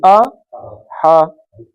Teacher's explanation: اور ہا ہا اوپر سے حلق کے اوپر سے نکلے گا، اوپری حلق سے